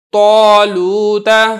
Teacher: اب یہ دیکھیں تو کو تو موٹا کرنا ہی کرنا ہے، تو کی وجہ سے جو الف ہے یہ بھی پر کر کے یعنی موٹا کر کے پڑھا جا رہا ہے